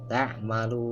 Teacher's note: panjangnya itu ya 2 juga boleh sebetulnya, tapi lebih baik baca 4 harakat sampai 6 harakat, ya, atau 2 alif sampai 3 alif gitu, ya, baiknya gitu. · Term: mad arid lis sukun